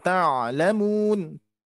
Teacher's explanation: Jadi untuk huruf ain ta'lamun. Jadi dialirkan karena dia termasuk huruf halki yang bagian tengah yang harus kita alirkan